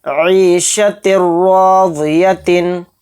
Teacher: تنوین کے بعد را آ رہا ہے تو اس میں ادغام بلا غنہ کا قاعدہ ہو رہا ہے، اس میں غنہ نہیں کریں گے، اس تا کو را میں ایک دم ہم ملائیں گے